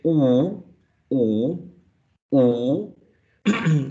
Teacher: When you say oo, oo, oo, your tongue is still up, but it goes back, it goes backwards